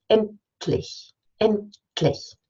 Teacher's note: we move from the N, which lets the airflow out through the nose, into the T, and so we stop the air coming through the nose, and we also stop it in the mouth. And so we stop the airflow, but then we release it into the L. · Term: liquid release